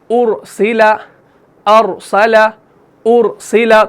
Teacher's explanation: اس را کو آپ نے موٹا پڑھنا ہے، اس کو باریک بالکل نہیں پڑھنا